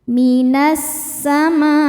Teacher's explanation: Cara bacanya alif lam lewat masuk langsung ke sin atau disebut idgham syamsi